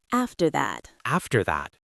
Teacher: In natural English, we link the R sound at the end of after to the TH sound in that.